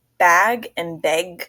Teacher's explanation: Midwest natives pronounce sounds like bag and beg with the same vowel sound